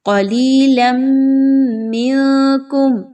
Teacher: تنوین کے بعد میم آ گئی تو ادغام مع الغنہ